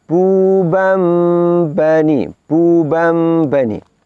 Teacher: Karena nun sukun atau tanwin bila berhadapan dengan huruf ba, maka bunyi nun sukunnya harus ditukar, diganti dengan bunyi huruf mim. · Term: iqlab